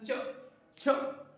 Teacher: तालव्य से छूकर निकलती है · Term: तालव्य व्यंजन